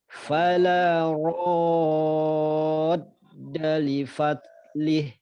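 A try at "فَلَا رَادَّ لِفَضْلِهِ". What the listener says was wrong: Dha-nya tebalkan. Li fadlih. Coba ra-nya dibuka lagi. Fala radda li fadlih. Li fadlih.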